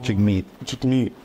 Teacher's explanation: it's the emphasis on the second syllable